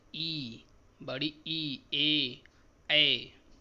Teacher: उच्चारण के समय जीभ का आगे वाला भाग ऊपर उठता है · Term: अग्र स्वर